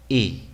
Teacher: esta es una I corta que la vamos a producir desde la posición que nosotros utilizamos para producir la E, pero en lugar de decir E vamos a decir una I.